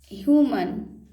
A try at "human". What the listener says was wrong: देखिए यू को यू पढ़ने के आदत क्यों नहीं डाल रहे हैं। यू यू यू, तो यू पढ़िए, क्या है।